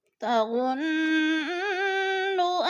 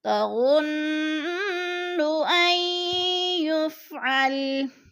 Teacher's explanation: تظن کی نون مشدد ہے، غنہ کریں گے